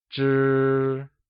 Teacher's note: is pronounced using a high-level tone